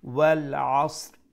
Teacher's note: we'll be reciting two letters at the end: sad with its original jazm and ra with the temporary jazm due to stoppage . So we'll pronounce wal asr. তো এই সূরার মধ্যে দেখো